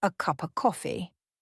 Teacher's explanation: of would often get lost in a phrase like a cup of coffee, which sounds more like a cup of coffee.